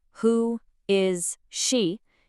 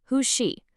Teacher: The S sound in is links directly to the sh sound in she. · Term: One smooth, connected sound